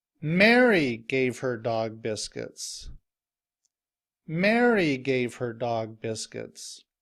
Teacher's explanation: when I say the name Mary I say a louder and longer and my voice is higher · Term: stress